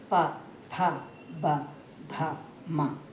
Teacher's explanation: ప ఫ బ భ మ పెదాల సహాయంతోనే పలుకుతున్నాం అనమాట. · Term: ఓస్ట్యాలు